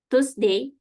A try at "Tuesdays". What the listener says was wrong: Tuesdays. Ya, cara ngomongnya tuh kayak agak-agak C gitu, choose. Ya, Tuesdays. Ada S-nya ya, Tuesdays.